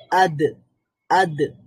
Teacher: আওয়াজটা বন্ধ হয়ে যাচ্ছে পাশাপাশি বাতাসটাও বন্ধ হয়ে যাচ্ছে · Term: কলকলা